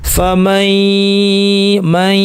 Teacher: এখানে আমরা বলছি এটা গুন্না সহ ইদগাম, অর্থাৎ নুনকে আমরা ইয়া বানিয়ে দুইটা ইয়া অর্থাৎ তাসদীদ যুক্ত ইয়া হিসেবে পড়বো ঠিকই, কিন্তু এর অর্ধেকে আমরা গুন্না করবো। কিরকম দেখেন, এখানে ভেঙে দেখানো হচ্ছে ফা মাই ইয়া, দুইটা অংশ হবে।